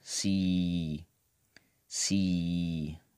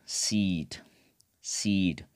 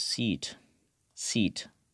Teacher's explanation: vowels are longer when they are an open syllable, okay? And comparatively short when followed by voiced sound, and short when followed by voiceless sounds.